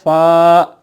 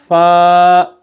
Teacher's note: ऊपर के 2 सामने के दांत जब नीचे के होंठ की तर रहने वाली जगह पर लगेंगे तो पढ़ा जाएगा फ़ा